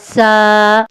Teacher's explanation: ایسے محسوس کریں جیسے موبائل پر وائبریٹ ہو رہی ہو، لیکن موبائل پر تو پراپر وائبریٹ ہوتی ہے، اس کا اتنا وائبریٹ کے ساتھ کنیکشن نہیں ہوگا لیکن ہوگا زا، ٹھیک ہے۔ گلے سے سینے کی طرف آپ کو تھوڑی سی ہلکی سی وائبریشن سی محسوس ہوگی